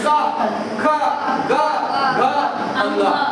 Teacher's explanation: लेकिन हम पढ़ रहे हैं स्पर्श में, अभी तक ये स्पर्श वाला भाग है नहीं। देखिए क, जब हम क का उच्चारण करते हैं हमारा ये जो कंठ है, कंठ को स्पर्श करते हुए निकलता है